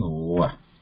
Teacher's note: Va has a dantoshtha position, means the combination of teeth and the lips. Both coordination is needed there.